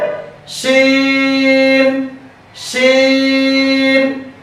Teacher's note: শিন হরফটি পড়ার সময় আওয়াজ নরম হবে, চিকন হবে, নিচের দিকে দাবিত, হামস বাতাস চালু, আওয়াজও চালু। লক্ষ্য করুন শিন হরফটি পড়ার সময় শিশি শব্দ হবে, শিন শিন।